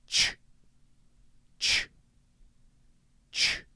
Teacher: The basic mouth shape is similar. Instead, you're starting with that tongue against the top of your mouth and then releasing it and stopping it again immediately. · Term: CH sound